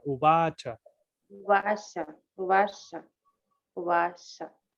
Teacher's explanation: la primera A se pronuncia un poquito más larga.